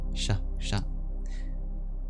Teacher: your regular palatal sibilant as we have in English